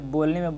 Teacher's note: तो जो ब है, बोलने में ब क्या हो रहा है, ब जो है ओष्ठ से निकल, यानी कि ओष्ठ सट के ब निकल रहा, तो इसलिए क्या हो जाएगा, ओष्ठ ध्वनि हो जाएगा